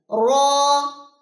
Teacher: اس کو کبھی ایسے نہیں پڑھنا را نہیں, اس میں تکرار نہیں ہوتی اتنی زیادہ